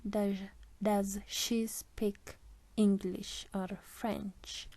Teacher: Rising intonation comes before the word English, and our falling intonation comes before the word French. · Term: Rise fall intonation